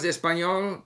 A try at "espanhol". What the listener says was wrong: Ele está pronunciando esse L ao final muito forte, espanhol. para fazer isso difícil, podemos ver que ainda tem essa pronúncia espanhola.